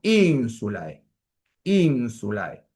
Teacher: No hay que practicarlo un poquito, porque no tenemos ese tipo de diptongo. Si pueden llevar la E un poquito hacia la I, o todo lo hacia la I que sea necesario para que ustedes puedan pronunciarlo como un diptongo.